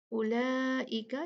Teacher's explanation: اولئک یہ مد ہم 4 کاؤنٹ کھینچیں گے کیونکہ لا مد بنی اس کے بعد حمزہ کو دیکھا ہم